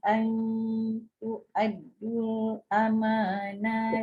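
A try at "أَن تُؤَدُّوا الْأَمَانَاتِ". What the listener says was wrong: Tu'addul. Dia mat asli dia dah tak panjang kalau jumpa huruf mati.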